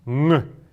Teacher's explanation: Н, она носовая у нас, и что-то среднее между буквой М и Н, только через нос